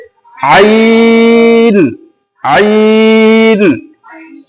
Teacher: ऐसा नहीं कि आइन बोल दिए, इसको भी थोड़ा सा खींचना है।